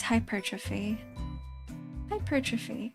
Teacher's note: pronounce the word hypertrophy with the emphasis on the second syllable? It seems more logical to pronounce it with emphasis on the first syllable [music] like every other word starting with the prefix hyper like hyperactive hyperorrection.